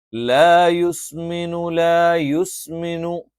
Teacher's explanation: സ എന്നുള്ള അക്ഷരം നാവിന്റെ കൂർത്താറ്റം രണ്ടു വരി മുൻപല്ലുകൾക്കിടയിൽ വെച്ചുകൊണ്ടാണ്